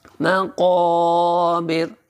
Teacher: یہ قوف موٹا کیا جائے گا، اور الف سے پہلے زبر ہے تو اس قوف کو تھوڑا سا کھینچ کر بھی پڑھا جائے گا۔ یعنی کہ آپ منہ پورا تھوڑا سا زیادہ کھولیں گے، تھوڑا سا آواز کو اوپر کی طرف اٹھائیں گے۔